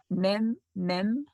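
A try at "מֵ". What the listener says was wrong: Not mem. It's 2 dots. Okay, it's 2 dots. Yes, mame.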